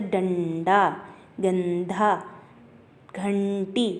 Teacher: इसका उच्चारण नाक से होता है, इसलिए अनुस्वार कहते हैं